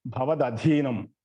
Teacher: చదివేటప్పుడు జాగ్రత్తగా చూసుకోండి, ఎందుకంటే భవదధీనంలో ముందు మామూలు దా వస్తుంది, తర్వాత ఒత్తు ధా వస్తుంది.